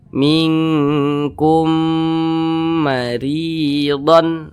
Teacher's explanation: cara bacanya itu didengungkan. Nah, kita tahan sejenak, kita panjangkan sejenak.